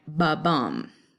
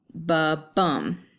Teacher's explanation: an iamb is going to have unstressed, stressed